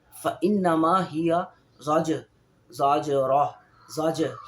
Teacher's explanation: کیونکہ جیم پہ جزم ہے اور ساتھ اس کے زا ہے، تو جب ہم زا کو جیم سے ملائیں گے تو اس میں قلقلہ پیدا ہوگا